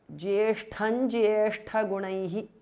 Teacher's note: Jyeshtham ends in Anuswara followed by Jyeshtha gunaihi ja. So the Anuswara changes to nya, which is the nasal of the Chavarga